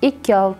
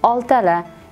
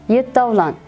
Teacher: ko'rib turganingizdek, ikkinchi bo'g'indagi i tovushi tushishi kuzatilyapti